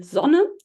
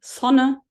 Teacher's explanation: in German at least in a syllable initial position this sound is always voiced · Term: voiced uh fricative